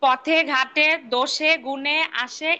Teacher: এক, পদের অন্তে এ সংবৃত হয়